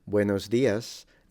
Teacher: the S at the end is a bit in between the sh and the S frontal so it's kind of in between it's a retracted s which is the same s that they used in classical Latin